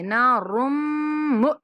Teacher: را کو میم کے ساتھ ملائیں گے اور میم پر غنہ کریں گے